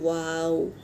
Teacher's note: वाव जिस तरह इंग्लिश में ओ अदा करते हैं इस तरह होठों को गोल बनाकर अदा करेंगे वाव